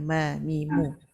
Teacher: Senang izlaq sebab dia kat bibir je. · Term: huruf mim